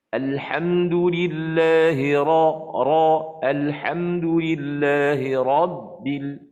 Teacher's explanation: Ra itu ra tebal. Ra tebal ni kita kena angkat pangkal lidah.